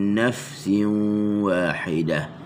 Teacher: huruf nun, na, hujung lidah di langit. Lepas tu masuk ke fa, naf, min nafsin wahidah, nafsin wahidah.